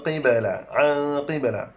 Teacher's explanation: Qaf berbaris kasrah tak payah kita tebal. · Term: dengung